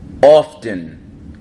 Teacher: notice with the often we pronounce the T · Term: North Jersey accent